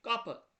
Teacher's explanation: Qapı sözündə vurğu sonuncu hecada I saitinin üzərindədir.